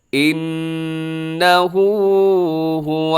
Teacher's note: الٹا پیش کو لمبا کرنا ہے